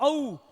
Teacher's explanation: इसमें हमारे कंठ से आवाज आई और होठ हमारे होठों ने अपनी स्थिति को परिवर्तित किया, यानी इसमें होठ का यूज भी हुआ और कंठ से आवाज आई, तो ये क्या हो गए? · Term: कंठोष्ठी